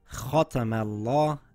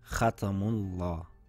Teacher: For example, the letter Mim should be pronounced thin even though the Laam is being pronounced thick. So it should read Khatamallah and not Khatamullah.